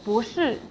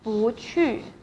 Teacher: If it is a case that 不 is followed by a fourth tone, and then 不 will be pronounced as second tone.